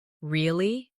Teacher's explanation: Say really with a rising tone to show surprise.